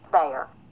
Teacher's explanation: there isn't a lot of the diphthongization that's going on in the southern dialect